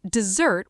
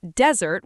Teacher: Dessert with two s's has the stress on the second syllable. Desert with one s has the stress on the first syllable.